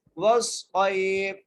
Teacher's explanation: آگے واو کو صاد سے ملائیں گے، صاد کو موٹا کر کے پڑھیں گے